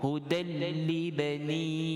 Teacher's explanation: kita idgham, tetapi tidak dengung, termasuk kan dengan kita melafazkan lam dengan nipis